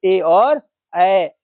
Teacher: ए और ऐ 2 ऐसा वर्ण है जो कंठ तालव्य वर्ण के अंतर्गत आता है